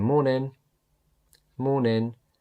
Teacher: I'm saying morning, but I'm not really pronouncing the G.